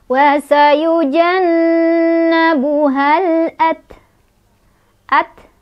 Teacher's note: Taknya ada sifat hamas, ada angin keluar ya.